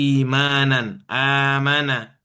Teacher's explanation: Mad badal ini ketika hamzah bertemu dengan huruf mad seperti imanan, amana, ya, dan mad badal hanya 2 harokat saja